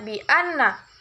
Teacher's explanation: hukumnya adalah guna musyaddah karena ada huruf nun yang bertasydid, cara membacanya masuk dengan mendengung